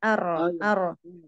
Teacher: kalau yang di hijaiah itu itu rnya takrirnya jelas ar ar tapi memang tidak terlalu sampai getarnya banyak